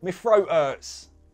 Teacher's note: in a Cockney accent, you can change my to me. You don't have to, it's an option.